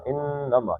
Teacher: انما نون کے اوپر شد ہے تو اس کو 2 حرکتیں کھینچ دینا ہے، انما نہیں پڑھنا، انما، ٹھیک ہے، اس کو کھینچ کے پڑھنا ہے۔